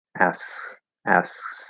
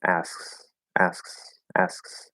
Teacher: you can hear the back of the tongue is coming up to sort of block the airflow a little bit and then it goes back down